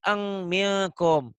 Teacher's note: Jadi kalau ihfa itu N-nya tetap tapi tambah G. Jadi eng minkum. · Jadi bunyi nun mati atau tanwin ketemu huruf ihfa, bunyi N-nya tambah G.